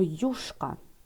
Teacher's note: В слові юшка ми бачимо, буковка Ю стоїть на початку слова, а отже позначає два звуки Й, У